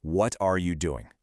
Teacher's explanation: The formal textbook version is what are you doing? You hit every single word hard. But out in the real world, this instantly turns into what you doing.